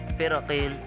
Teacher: ra sukun yang huruf sebelumnya berbaris kasrah dan bertemu dengan huruf isti'la yang berbaris kasrah juga lebih utama dibaca tipis